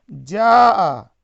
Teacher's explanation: اسے ایک الف یا 2 حرکت کے برابر کھینچ کر پڑھیں گے، اور اسے ہم نے تختی نمبر 4 میں پڑھا ہے. جاء، یہ مد متصل ہے، اسے 4 یا 5 حرکت کے برابر کھینچ کر پڑھنا چاہیے